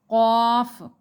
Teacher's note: قاف، زبان کی جڑ جب اوپر کے تالو سے لگے، یعنی جو زبان کا آخری حصہ ہے جو حلق کے ساتھ جڑتا ہے، وہ جب اوپر کے تالو کے ساتھ لگے گا تو قاف ادا ہوگا، قاف۔ اسی طرح کاف، زبان کی جڑ جب ذرا منہ کی طرف ہٹ کر اوپر کے تالو سے لگے، یعنی کاف۔